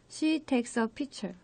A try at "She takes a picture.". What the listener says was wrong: 여기서 발음 조금만 더 고쳐보면은 네. 피처가 아니라 픽처예요. 네. 픽처.